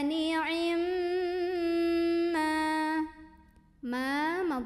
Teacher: ghunnah musyaddadah karena ada Meme yang ada tasydidnya maka cara membunyikannya didengungkan dulu bunyi m-nya ditahan sampai ada getaran halus ke hidung kurang lebih dua harokat